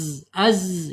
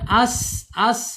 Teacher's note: karena tekanan lidahnya kuat ya sehingga mendesis dia keluar mendesis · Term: shofir